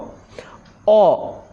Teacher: एहा एक पश्चात विवृत और उदासीन स्वर ध्वनि